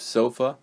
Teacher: in the second syllable of sofa the schwa sound is used